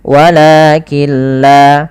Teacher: Apabila ada nun sukun bertemu dengan lam, maka cara membacanya kita idghamkan nunnya kepada huruf lam, sehingga di situ tidak dikasih harokat, artinya nunnya tidak dibaca, langsung ke lam yang berharokat tasydid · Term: idgham bil gunnah